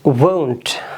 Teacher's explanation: जैसे अंग्रेज़ लोग कहते हैं home, go, ये जो glide आ रही है ये इसके sound में आती है will not वाली केस में